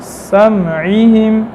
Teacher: سین حمز ہے اور اسی طرح رخوت ہے اور صفیر بھی ہے